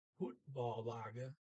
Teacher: It's the football team because it's et on the end. T not being pronounced.